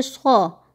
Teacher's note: صاد کی آواز ہمیشہ موٹا، صاد کو ہمیشہ موٹا پڑھا جاتا ہے. صاد کی آواز ہوتی ہے صا.